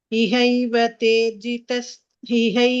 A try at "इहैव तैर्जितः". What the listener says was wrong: Tairjita, it is not Tejis, that is Tair.